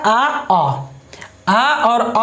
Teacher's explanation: ये कंठ से अब ध्वनि निकल रही हो, उसी को बोलते हैं कंठस्वर